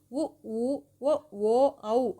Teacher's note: வாய் திறக்கும் முயற்சியுடன் உதடுகளை குவிப்பதால் பிறக்கின்றன